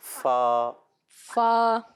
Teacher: اوپر کے دانتوں کے کنارے اور نچلے ہونٹوں کے تر حصے۔ اوپر کے دانتوں کے کنارے نچلے والے ہونٹ کے تر حصے سے لگے